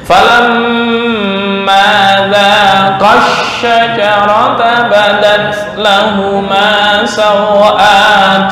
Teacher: Ma kepanjangan, za kepanjangan, ini satu alif, jangan lebih, jangan kurang